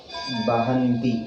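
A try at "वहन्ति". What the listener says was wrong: Vaha. Ba Oh, are you Bengali? Then why Baha? Vahanti.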